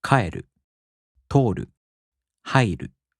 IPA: kaꜜeru toꜜoru haꜜiru